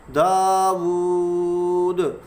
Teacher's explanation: دال جو ہے یہ قلقلہ میں سے بھی ہے، جب اسے ساکن کیا جائے گا تو یہاں پہ قلقلہ ہوگا